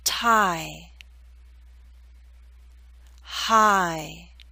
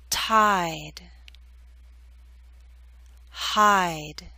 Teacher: It may help you to know that there's a slight Y sound, y, that makes the glide possible, I. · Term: long I sound